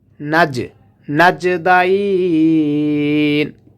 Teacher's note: ওয়াহাদাইনাহুন নাজদাইন, হাটা নুনকে ধরবে, এই মাঝের দুটি হরফকে ধরবে না। আর জিমটা কলকলার হরফ, এই জন্য এখান থেকে পাল্টা আওয়াজ হবে